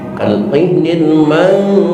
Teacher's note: Berbeda lagi dengan nun mati tanwin ketemu huruf fa, ikhwanya ikhfa ausat, maka suara huruf imbuhannya bukan lagi ang, bukan lagi n, tetapi m. Kalqihnil manfus, bukan mangfus, bukan juga manfus, tapi manfus.